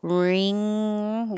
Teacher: the back of the tongue is very high and it kind of slides back instead of coming down like a g